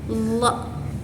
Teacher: Dan ada huruf lo, lo. Nah, huruf lo ini keluar dari sisi lidah dan gigi geraham atas. Nah, huruf lo ini bersifat tebal dan berat saat dilafalkan.